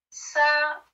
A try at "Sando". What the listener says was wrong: Tu as dit ça c'est le ton haut que tu fais là, c'est un ton moyen.